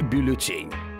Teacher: Так как слово французское, то ударение падает на последний слог